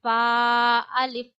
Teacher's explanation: ऊपर के दांतों की जो नोक है वो नीचे वाले होठ के गीले हिस्से पे लगानी है और फ पढ़ना है।